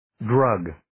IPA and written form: drəg (Drug)